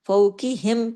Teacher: कफ जो है heavy letter है उसको हमने मोटा पढ़ना है